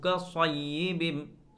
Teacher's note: أو كصيب من السماء فيه ظلمات ورعد وبرق أو كصيب، صاد کا مخرج زبان کی نوک دونوں دانتوں کے درمیان لگا کر لفظ صاد سین اور زیادہ ہوتے ہیں، لیکن سین اور زا باریک ہوتے ہیں۔ لفظ صاد کو موٹا کیا جاتا ہے، اس میں ایک سیٹی کی آواز آتی ہے